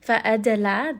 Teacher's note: dal is going to have qalqala, so make sure you give it a little bit of bounce.